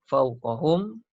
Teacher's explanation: Mim mati jumpa ya, izhar syafawi. Jelas dan terang kita sebut huruf mim tu tidak ada dengung.